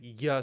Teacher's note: it's basically the tongue kind of hugging against the palate to make the yeah sound